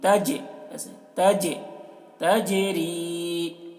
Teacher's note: تجری جیم میں بھی آواز ٹکرائے گی، ڈبل آواز نکلے گی جیم کی